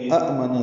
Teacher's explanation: آ میں مد بدل ہے، دو حرکات لمبا کریں گے ، آمنا سے آمنا بنا، نون مشدد پہ غنہ ہے تو